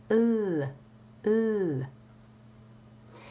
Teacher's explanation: Now let's review the position for the L. In French, the L is pronounced with the tongue low and the tip of the tongue curved up, touching very lightly against the back of the upper teeth